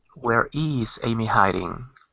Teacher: you could put the stress on the is